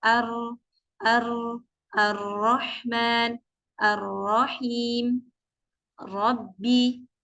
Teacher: ketika mengucapkan huruf ro itu memang harus ada getaran, harus ujung lidah kita ini bergetar.